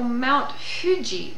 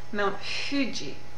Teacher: your lips are already rounded for when you express that H and it's sort of in between an h and an F so Mount Fuji not Mount Fuji it's not an F it's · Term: a very rounded H